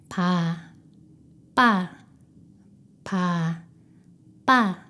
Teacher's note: 비읍 2개를 나란히 붙여서 쌍비읍이 되었습니다. 입술에 훨씬 강한 긴장과 힘을 주고 공기를 막았다가 숨을 전혀 내보내지 않으면서 소리를 터뜨립니다. 목구멍에 힘을 주어 성대가 긴장하는 느낌이 있습니다.